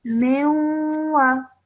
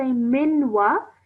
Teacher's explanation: You're just producing a nasal sound. Okay. Not a solid noon sound.